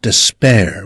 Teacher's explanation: pronounced despair with stress on the second syllable